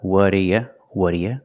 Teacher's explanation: Making a fast D, not do, but duh.